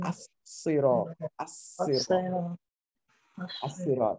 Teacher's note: And sod is one of those letters that the lam merges into. So instead of al-sirat al-mustaqim, al-sirat, you say as-sirat, as-sirat, as-sirat, and indicate that nothing on the lam and then the double of the letter.